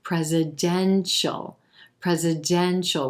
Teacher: we're going to emphasize that e as in red in the third syllable and then that suffix h sound right into the dark l